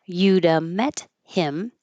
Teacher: The T changes to a D and the H disappears.